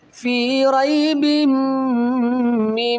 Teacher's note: دو زیر کی تنوین کے آگے یعنی کہ میم آ رہا ہے، یہاں ادغام مال غنہ بھی ہو رہا ہے ساتھ میں